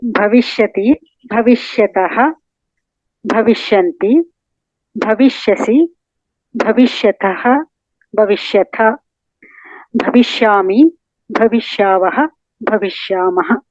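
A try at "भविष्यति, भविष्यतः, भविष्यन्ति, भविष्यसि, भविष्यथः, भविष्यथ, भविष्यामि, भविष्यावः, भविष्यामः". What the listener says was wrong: Uttamam. Samyak ritya uktavati.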